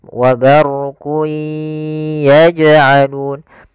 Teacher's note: masukkan ke huruf ya dan ditahan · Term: idgham bi gunnah